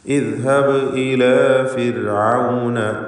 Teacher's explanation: ഫിർഔൻ ഈ പദത്തിലെ റായിന് തർക്കീഖാണ്. സുക്കൂനുള്ള റാവും തൊട്ടു മുമ്പിൽ സ്ഥിരപ്പെട്ട കസ്റും ഉണ്ട് എന്ന കാരണത്താൽ ഫിർ എന്ന് നേർപ്പിച്ച് റാവ് ഉച്ചരിക്കുക